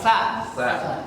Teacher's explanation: Kalau sa keluar dari ujung lidah karena ujung gigi seri atas.